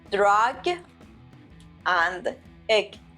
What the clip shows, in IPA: drʌɡ